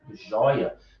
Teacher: Não tem acento. Joia tem ditongo aberto no meio, na posição paroxítona